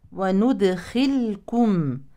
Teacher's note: هذه اللام الساكنه في فعل اذا هي لام فعل مظهره